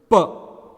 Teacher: there is a sudden stoppage of air in the mouth, and then there is a release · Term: consonant sound